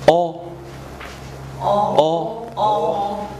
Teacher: 舌头在后边，这就是说我们所说的啊，就是低元音，或者是说后元音